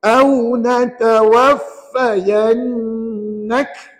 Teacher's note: Jaga elok-elok huruf yang bersabdu. Dekat sini ada huruf yang bersabdu, huruf fa dengan huruf nun. Tapi kena ingat hanya nun saja yang wajib dengung. Kalau fa tak payah berdengung pada dia.